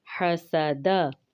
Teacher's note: हा का ख्याल रखेंगे, हरूफ हल्की है, सीन में सीटी है, दाल बारीक पढ़ा जाएगा